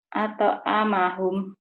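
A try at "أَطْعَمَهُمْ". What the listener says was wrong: alta amahum, jangan ate tapi alta, alta, alta. At'amahum.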